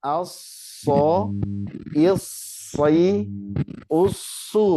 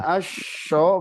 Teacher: desisnya desis sin ya, bukan shin.